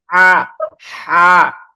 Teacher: হা, গলার একদম মধ্যখান থেকে, এই যে গলা যে হ্যাঁ কণ্ঠনালী, কণ্ঠনালীর ঠিক মাঝখান থেকে যদি শব্দটা বের করেন, তাহলে যেমন হয় হা, হা।